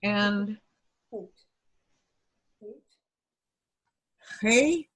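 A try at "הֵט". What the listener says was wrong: What was the last sound you made? Hate. Hate. It has a toe.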